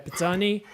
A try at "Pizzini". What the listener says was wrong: No, wrong. Pizzini. Yeah, you say E, not I. Yeah, that's Italian thing.